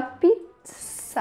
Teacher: E aí eu comecei a perceber, e realmente, eu achava que em português a gente falava com som de Z, pois tem dois Zs ali, mas não, em português a gente fala com som de S, a gente tem T e S